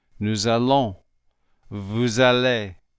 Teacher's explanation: This is called liaison, and it works this way with all final consonants followed by a vowel. When we slide the S into the A, you will notice that it almost sounds like a Z.